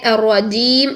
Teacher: جیم میں شدت ادا کرنا ضروری ہے